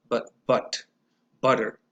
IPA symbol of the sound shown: ʌ